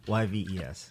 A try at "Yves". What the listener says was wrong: Silent. silent. The S is silent. Yves Saint Laurent.